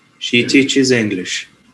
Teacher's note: stress falls on the noun